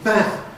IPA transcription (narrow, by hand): mæ̃n